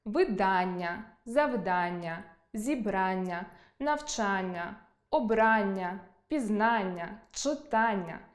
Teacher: Більшість іменників, які закінчуються на -ання, мають наголос на -а